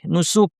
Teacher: কাফ সাকিন, বাতাস বের করে থামবো।